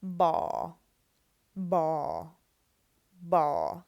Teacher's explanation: So that's a low tone because we are using the first tone mark